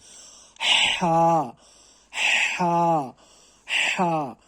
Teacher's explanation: اس کو یعنی کہ زور لگانا پڑتا ہے، ہا کو سانس چھوڑنی پڑتی ہے اس کے ساتھ. · اور اسی سانس جب ہم چھوڑتے اسی کے ساتھ ہمیں ہا پڑھنا ہے تھوڑا سختی کے ساتھ